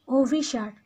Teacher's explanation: অটা এখানে পরিবর্তন হয়ে ওতে হয়ে যাচ্ছে, ও হয়ে যাচ্ছে, মানে স্বরে অটা ও হয়ে যাচ্ছে।